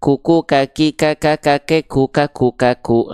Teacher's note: Nama sifatnya adalah hams. Hams itu artinya apa? Hams itu artinya adalah mengalir nafas.